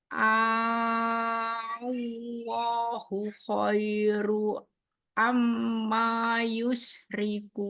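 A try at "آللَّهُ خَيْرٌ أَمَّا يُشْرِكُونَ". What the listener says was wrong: Ini khairun ya. Khairun. Amnya dibaca 3 harokat. Ini yush. Pakai shid. Yushri.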